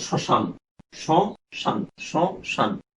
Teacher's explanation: দেখো মফলা যদি শব্দের শুরুতে যদি মফলা থাকে, শব্দের শুরুতে যদি কোনো ব্যঞ্জনের সাথে মফলা আসে তখন কিছুটা ঝোঁক পড়বে, সেই শব্দটার উপরে কিছুটা ঝোঁক পড়বে এবং সামান্য নাসিক্য হবে। ম যেহেতু নাসিক্য বর্ণ, সামান্য নাসিক্য হবে।